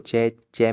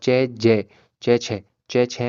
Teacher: च में हल्की वायु बाहर है और चै ज च छ च छह में ज्यादा वायु बाहर है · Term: महाप्राण